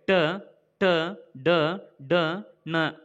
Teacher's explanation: ಮೂರ್ಧ ಭಾಗದಲ್ಲಿ ಅಂದರೆ ನಾಲಿಗೆಯನ್ನು ಹಿಂದೆ ಚಾಚಿ ಬಾಯಿಯ ಮೇಲ್ಭಾಗವನ್ನು ಸ್ಪರ್ಶಿಸಿದಾಗ ಉಚ್ಚರಗೊಳ್ಳುತ್ತವೆ. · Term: ಮೂರ್ಧನ್ಯ ಅಕ್ಷರಗಳು